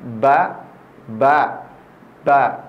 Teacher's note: tempat keluar hurufnya adalah di dua bibir dirapatkan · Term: hurufba, huruf ba